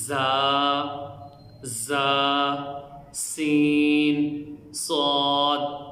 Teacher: سیٹی والے حروف ہیں کہ ان کے ادا کرتے وقت آواز میں سیٹی پیدا ہوگی